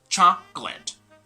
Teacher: an extra syllable which is not supposed to be there like in spelling there are three syllables but in pronunciation they're two syllables